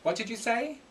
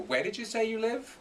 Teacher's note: the intonation is going up because you're asking for clarification or for repetition